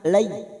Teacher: Layin artinya lunak, maka kita lunakkan lay, seperti bertemu dengan huruf i. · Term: huruf layin